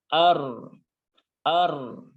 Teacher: ketika fathah bertemu dengan ro yang berharokat sukun, maka ro ini dibaca dengan tebal. Ya, yaitu dibaca dengan ar.